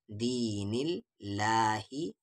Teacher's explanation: اللہ کے لام سے پہلے زیر ہے، یہ اللہ کا لام پتلی آواز سے پڑھا جائے گا